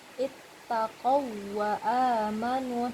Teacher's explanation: bacanya seperti tasydid, ittaqau wa amanu, tapi tidak kita dengungkan